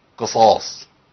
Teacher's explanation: القاف مكسوره وبعدها الصاد مفخمه فاثر تفخيم هو فخم القاف زياده استعدادا للصاد